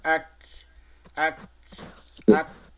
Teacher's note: ওই সাকিন দিয়ে যখন উচ্চারণ করবো তখন ওই হামসের হালকা বাতাসটা একটু বের হবে।